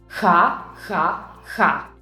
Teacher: less effort than, say, the Spanish h